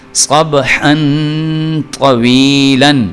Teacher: طا جو ہے یہ حروف اخفاء میں سے ہے, تو اس لیے یہاں پہ اخفاء کر کے یعنی کہ غنہ کر کے پڑھیں گے